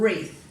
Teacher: we drop the w and we just start the word with the er sound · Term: silent letters